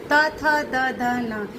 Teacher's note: इन्हें कहते हैं दंतव्य व्यंजन, क्योंकि जीभ हमारे दांतों को छूती है।